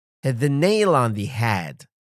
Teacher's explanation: Stress on hit, nail, and head.